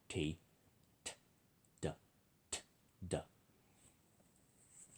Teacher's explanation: It's pulled back slightly on the bottom of your mouth, and then exhale. T is D, but no voicing. T, t, d, t, d.